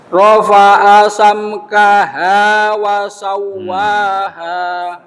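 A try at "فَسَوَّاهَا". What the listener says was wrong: Damel fa, mboten wa. Rafa'a samkaha fa sana suwa.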